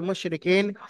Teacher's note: পড়বেন মুশরিকিন র নিচে হারাকা তাড়াতাড়ি পড়তে হবে টান দেয়া নিষেধ ইয়া সাকিন ডানদিকে কাফের নিচে জের আছে ইয়ামাদা এক আলিফ পরিমাণ টান দিয়ে পড়তে হবে